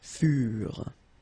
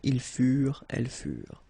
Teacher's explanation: Keep in mind that ENT, you know, the ending for the plural form is never pronounced, so furent.